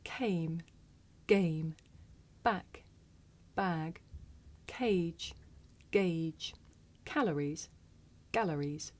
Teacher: In English, we say the voiceless sound with a puff of air.